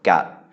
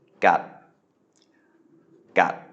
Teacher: we have a mid-class consonant and then a stop final. So that's a dead syllable. So it is a low tone, gat. And we can see there, Sala'at is changing into Maihanagad because the final consonant is there.